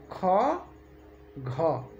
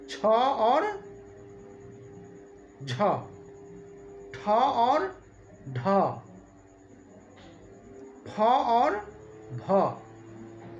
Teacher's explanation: महाप्राण में श्वास अधिक मात्रा में निकलती है और हकार की ध्वनि भी निकलती है। श्वास अधिक मात्रा में निकले और ह की ध्वनि निकले, ऐसे व्यंजन वर्णों को, ऐसे वर्णों को महाप्राण वर्ण कहते हैं।